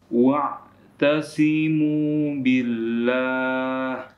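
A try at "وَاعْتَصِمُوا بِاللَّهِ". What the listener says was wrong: Baik, shotnya masih kurang tebal, harus kita tebalkan.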